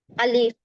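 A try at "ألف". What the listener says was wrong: దీర్ఘం తీయకుండా చెప్పాలమ్మా. అలీఫ్.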